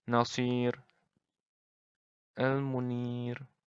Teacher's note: Jadi nggak ada penebalan di huruf ro-nya itu. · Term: ro tarkik